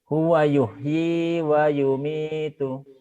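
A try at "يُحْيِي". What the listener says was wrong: Huwa yuhyi wa yumitu. Kurang kotor Pak. Ngorok. Kurang kotor. Bapak kalau pilek, maaf ya kalau pilek kan suka dibuang tuh. Di gini di tenggorokan, Mbak.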